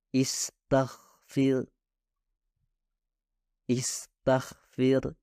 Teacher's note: ketika huruf Gin dikelilingi oleh huruf-huruf lain yang dihasilkan tanpa getaran beberapa pembelajar cenderung membuat gin juga tak bergetar hasilnya akan terdengar lebih seperti k daripada Gin seperti pada kata